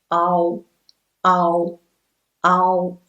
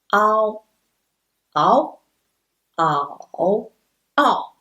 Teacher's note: Still, we start from a and slide to o, but a is stressed.